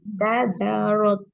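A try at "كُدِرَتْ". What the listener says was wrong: Kada, masih tipis. Waktu da, pangkal lidahnya jangan diangkat dulu. Nanti waktu ro. Da masih tipis. kesalahan yang sering terjadi itu gitu. Pada saat menebalkan salah satu huruf, itu huruf sebelumnya tuh sudah ikut ya, hati-hati.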